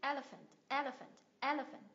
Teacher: Tức là nhấn âm tiết thứ nhất. Nhấn âm tiết thứ nhất, có 3 âm tiết này.